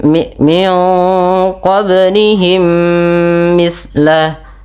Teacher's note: ada bacaan qalqalah yang di mana huruf ba nya wajib kita pantulkan · Terjadinya ada 2 huruf mim, yaitu mim dan mimi, yang dimana mim yang pertama dimasukkan kepada mim kedua dan ditahan sepanjang 2 harakat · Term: idgham mimi